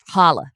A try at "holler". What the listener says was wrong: There's hard R. Holler.